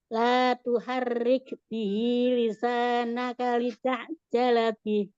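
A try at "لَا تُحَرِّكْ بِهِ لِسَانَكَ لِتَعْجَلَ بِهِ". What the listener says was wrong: Masih rohnya terlalu getarannya banyak.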